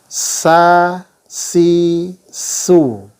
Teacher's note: Kemudian sifat dari huruf sin adalah yang pertama, dia memiliki sifat al-hamas, ya, keluar nafas atau udaranya mengalir. Ya, ketika tangan kita taruh di sini, huruf itu disukunkan lebih kentara, as, ya, ada udara yang keluar.